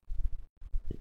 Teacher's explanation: Ini yang tadi yang kita sebut dengan katup epiglotis. Ketika kita lafalkan huruf ain, katup epiglotis inilah yang dia akan bergerak mengarah ke dinding tenggorokan, menyempit ke arah dinding tenggorokan.